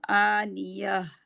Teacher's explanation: गोल ता को हा में बदलेंगे ना, तो आनिया, या नहीं करेंगे, अलिफ नहीं बनाएंगे इसको हमने हा में बदलना है, तो आनिया।